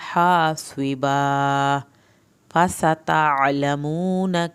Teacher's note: सीन को सीटी की आवाज़ के साथ पढ़ना है